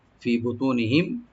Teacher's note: মিম সাকিন এখানে আমরা জাহার করব, এখানে গুন্না হবে না,